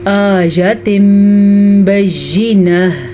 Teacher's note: تنوین کے بعد نون ساکن یا تنوین کے بعد با آ جائے تو نون ساکن یا تنوین کو میم میں بدل دیتے ہیں. یہ چھوٹا سا میم آپ کو نظر آ رہا ہے نا، یہ اقلاب کی وجہ سے آ رہا ہے.